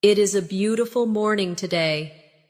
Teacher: Feel the flow from beautiful to morning. There's a tiny connection there where the sound moves smoothly without a pause.